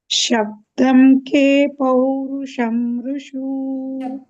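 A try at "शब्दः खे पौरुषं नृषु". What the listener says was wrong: ಶಬ್ದಂ ಇಲ್ಲ, ಅಲ್ಲಿ ವಿಸರ್ಗ ಇದೆ. ಶಬ್ದ ಅದು ಶಬ್ದ ಅನ್ಬೇಕು.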